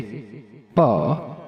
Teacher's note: ओष्ठ स्थान और स्पृष्ट प्रयत्न दोनों होठों को मिलाकर बोलना